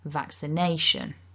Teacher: So what we're aiming for is vaccination. So vac is a bit stronger and nay is even stronger. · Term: double stress